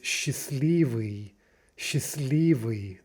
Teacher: The T drops out.